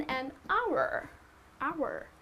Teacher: it is pronounced as our right the H is silent here